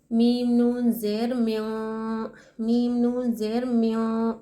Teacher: हम नाक में छुपा रहे हैं, इख्फा कर रहे हैं।